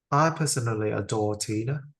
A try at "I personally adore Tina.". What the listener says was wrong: That felt still a bit too short. One more time.